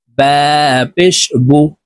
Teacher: পেশ হরকতের উচ্চারণ ঠোঁট গোল করে তাড়াতাড়ি করে উচ্চারণ করতে হবে।